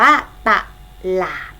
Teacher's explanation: พยางค์แรกจะออกเสียงอ่าพยางค์ข้างหลังหรือพยางค์ที่สองจะออกเสียงเหมือนมีหอหีบมานำ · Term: อักษรนำ